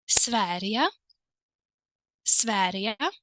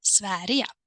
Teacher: The G turns into the sound Y.